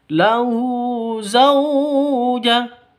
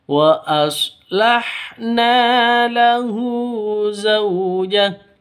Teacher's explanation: Zau sifat lin, lentur, lemas, tidak boleh disentak, tidak boleh dipanjangkan.